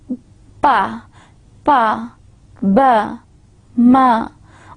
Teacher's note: If you are only and only using your lips, two lips, to produce the sound, then such sounds are known as bilabial, because you are using bi, two lips, bi, pa, ba, ma.